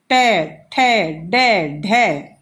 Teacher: कै वर्ग में कंठ से, च वर्ग तालवे से, और ट मूर्ध्य मतलब तालवे से आगे जब हम देखते हैं मूर्ध्य में ट वर्ग, ट हम देखते हैं दांतों के अंदर जो ऊपर वहां से हमारी जीभ टकराती है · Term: मूर्धन्य वर्ग